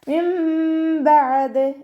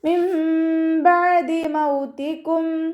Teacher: നൂൻ സാക്കിനെ നമ്മൾ മീമാക്കി മാറ്റിമറിച്ച ഉന്നയോടുകൂടി ഓതി കൊടുക്കുക. നൂനിൻ്റെ സൗണ്ട് അവിടെ കേൾക്കേ ഇല്ല. നൂനിൻ്റെ സൗണ്ടിനെ മീമാക്കി മാറ്റിമറിച്ച് ഉച്ചരിക്കുക.